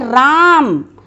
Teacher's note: जैसे हम किसी को बुलाते हैं तो नाम लेके बुलाते हैं, तो जैसे बोलते हैं राम, तो जो बीच में समय लगता है, जो बीच में एक गैप आ जाता है, राम, रा को हमने लंबा खींचा है, तो ये जो गैप आता है ये चीज़ है, इसको प्लुत स्वर के माध्यम से दर्शाते हैं।